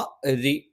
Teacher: രി ഒറ രി ഒറ എന്ന് പറയുമ്പം തഫ്ഖീമാണ്. രി എന്ന് പറയുമ്പം തർക്കീക്കാണ്. ശബ്ദം അല്പം നേർപ്പിച്ചാണ് പറയുന്നത്. നാവിൻ്റെ തലയുടെ മുതുക് മേലെ മുൻപല്ലിൻ്റെ മോണയിലാണ്.